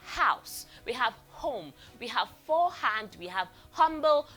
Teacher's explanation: There's a free flow of air coming out. So it is voiceless.